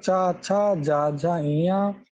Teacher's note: इकार, चवर्ग और या और सा का स्थान तालु है।